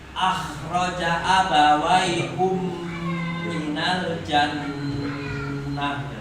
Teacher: a-nya tipis, kho-nya tebal